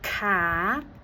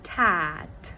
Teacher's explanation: sounds that are supposed to be produced with the back of your tongue are produced with the front of your tongue. So instead of saying cat, they might say tat. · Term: fronting